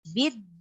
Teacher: Jadi din itu rongga mulut, keluar dari i-nya itu keluar dari rongga mulut. Jadi tidak boleh masuk ke hidung. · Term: al-jauf